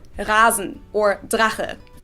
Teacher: The regular R in German is pronounced in the back of your throat, and many people practice this by gargling water, because what you do when you gargle is pretty much what you do when you pronounce the German R.